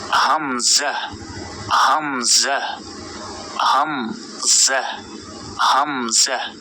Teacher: এরপর দেখুন এটা হচ্ছে হামজা, এই হামজাতে কোনো টান দেয়া যাবে না। হামজা হামজা হামজা হামজা, অনেকে হামজা বলে, আসলে হামজা হামজা।